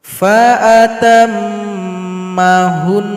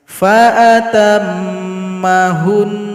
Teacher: Nun di sini kita sukunkan lalu dengungkan dua harakat